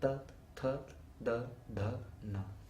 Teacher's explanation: the tip of the tongue hits the root of the upper teeth